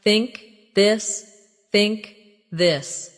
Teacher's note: The tongue comes gently between the teeth. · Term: th sound